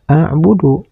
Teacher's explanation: Pada kalimat a'budu ini ada huruf dal di akhir kalimat dan dihentikan membacanya. Maka huruf dal ini harus dibaca qalqalah yaitu qalqalah kubro. Karena huruf dal ini dihentikan membacanya.